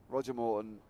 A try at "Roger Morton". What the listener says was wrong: You keep saying Roger Moore. I never hear you say Morton. I never hear. It sounds like more to me. That's what I'm just saying. Roger Moore's better. Sounds more.